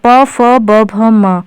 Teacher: तो प वर्ग का उच्चारण स्थान क्या है ओष्ठ है